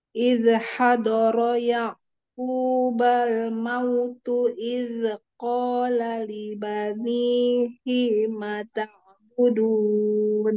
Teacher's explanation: Nah, roknya satu. Jangan hadara, pendekkan roknya.